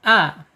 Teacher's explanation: alif ini makhrajnya ada di tenggorokan bawah, a ya, tenggorokan bawah. Kemudian sifatnya ada di asyidah, tertahan ketika dia sukun.